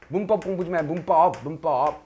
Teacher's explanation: 입술 소리가 입술 소리 아닌 것에 영향을 줘서 입술 소리로 바꾼 끝. 역행동화죠. 그렇죠? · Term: 양순음화